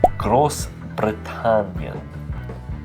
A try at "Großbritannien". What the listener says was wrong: Very good. I probably wouldn't roll your R's as much.